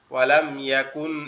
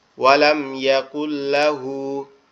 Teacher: কাপ সরাসরি লামকে ধরবে, নুনটা বাদ যাবে